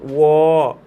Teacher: व दांत और ओष्ठ से बोला जाता है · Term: दंत ओष्ठ